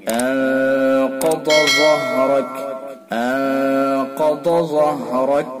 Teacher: انقض ظہرک، قاف کو پر، ضاد کو پر اور ضا کو بھی پر، دونوں کے اندر فرق کریں گے. ضاد کو زبان کی کروٹ سے نکالیں گے اور ضا کو زبان کے نوک ثنا والیا کے کنارے سے نکالیں گے.